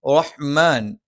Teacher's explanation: റഹ്മാൻ ഹ തൊണ്ടയുടെ മധ്യഭാഗമാണ്. മ രണ്ട് ചുണ്ടും തുല്യമായി അടച്ചു വെക്കണം. ന നാവിൻ്റെ അറ്റം മേലെ മുൻപല്ലിൻ്റെ മോണയിലാണ്.